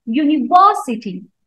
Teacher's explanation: the word university has secondary stress on third syllable